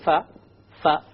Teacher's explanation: the letter fa comes when you put the outer dry part of the lip together with the upper teeth